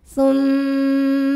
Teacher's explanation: musyaddadah atau wajibul gunnah atau mim musyaddadah sebab huruf mimnya bertasdid cara bacanya dengung bunyi m-nya tahan sampai ada suara masuk hidung kurang lebih dua harakat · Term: gunah musyaddadah